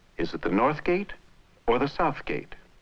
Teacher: there is a rise on South and then a final drop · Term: normal American English intonation